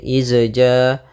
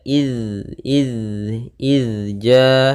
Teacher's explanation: huruf dalal sukun yang di mana dalal tidak boleh memantul ya tidak boleh izja tidak boleh juga ijja tapi dia id